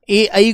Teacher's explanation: ए और आई का उच्चारण कंठ और तालु के मेल से बोला जाता है।